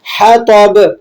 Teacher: ہا کو آپ نے باریک پڑھنا ہے اور تو کو موٹا پڑھنا ہے اور با پہ قلقلہ ہوگا، قلقلہ کبیرہ۔